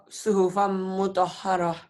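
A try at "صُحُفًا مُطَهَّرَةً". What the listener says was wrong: Suhufam ditahan ya. Dengung ada dengungnya. Suhufam. Suhufam mutahharah.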